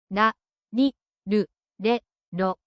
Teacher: It's not an English R or L. It's a soft flap sound. Quick and light.